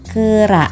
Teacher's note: vokal E, tengah atas pusat tak bundar pada kata kera